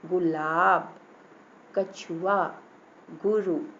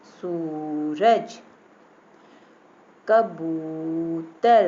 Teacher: सा पे थोड़ा टाइम लगा ना, सूरज। अब छोटे ऊ की मात्रा में आपने जल्दी से पढ़ लिया था, गुलाब, कछुआ, गुरु, है ना। अब बड़े ऊ की मात्रा में देखिए टाइम लग रहा है